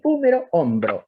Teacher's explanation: vean ustedes cómo se ha introducido una bilabial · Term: Epéntesis